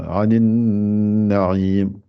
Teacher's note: obligé de rester deux temps avec le nez. Le temps de faire deux lettres.